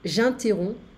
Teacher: so I don't hear the P.